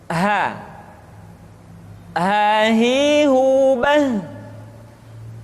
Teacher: huruf ha dikeluarkan dari tenggorokan yang terjauh, sama seperti kita mengucapkan huruf a